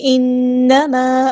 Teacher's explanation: نون پہ ہمارے یہاں پہ غنہ زمانی ہو رہا ہے، الف کے برابر رکیں گے. انما الف مد آیا تو مد اصلی کریں گے.